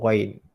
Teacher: Ghain hujung kerongkong, hujung halkum ataupun kerongkong.